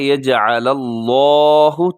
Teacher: تو لفظ اللہ کو پر پڑھیے گا کیونکہ اس سے پہلے لام کے اوپر زبر ہے